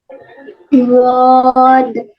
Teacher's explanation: यानी जुबान की जो करवट है उसको ऊपर की दाढ़ों के साथ लगाना है आपने।